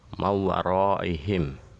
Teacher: nun mati bertemu dengan wawu kita leburkan menjadi satu sehingga nun mati tersebut dibaca wawu. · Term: idgham bi gunnah